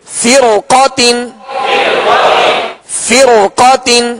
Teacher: کل فرق، فرقات، فرقات. اب را ساکن سے پہلے زیر اسی کلمہ میں اور اس کے بعد حروف مستعلیہ میں سے قاف ہے لہذا اس را کو پر پڑھیں گے